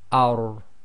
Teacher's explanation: So the first, or the three letters, is the ra, the lam and the noon. So the ra with a fatha on the letter before it, if it carries sukoon, goes into a heavy letter, i.e. it's tafkhim. So this will be pronounced as ar.